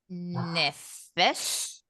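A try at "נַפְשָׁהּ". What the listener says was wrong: It is the word nefesh, but there's a suffix on it, so it turns it into nafsha. Nafsha.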